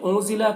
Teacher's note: کر پڑھ سکتے ہیں، انزلہ کے نون میں اخفا ہو رہا، نون کی آواز کو ناک میں چھپا کر پڑھیں گے